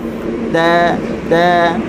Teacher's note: Ta huruf yang ringan bersifat dengan istifal dan infitah, maka kita lebarkan bibir mulut kita dan kita buka